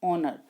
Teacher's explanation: In spite of its spelling, the word honor begins with the vowel sounds. Therefore, we use N.